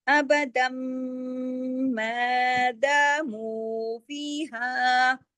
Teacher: یہ الف مدہ ہے لیکن یہ باریک پڑھا جائے گا، ہم نے قاف کے ساتھ موٹا ایسے پڑھا تھا، میم کے ساتھ ہم باریک پڑھیں گے، میں اس طرح سے، ابدم ماداموا فیہا، پھر فذہب، فذہب با پہ کلکلا، کیونکہ با جو ہے وہ سکون کی حالت میں۔